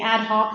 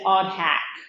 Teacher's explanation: here what happened was the vowels switched instead of saying ad Hawk the person said odd hack